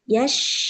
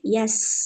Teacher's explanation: sin tanpa titik itu adalah ujung lidah bertemu dengan ujung gigi seri bawah